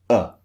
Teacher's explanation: it's just neutral no rounded lips no wide mouth no open mouth it's just neutral